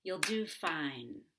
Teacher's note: you're going to emphasize do because it's a verb but not yo because that's a pronoun and a helping verb